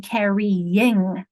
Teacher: Y at the end of carry has shifted to a consonant in carrying. Notice how it's the Y, like in yellow. · That Y is shifting to a consonant sound, not a vowel sound.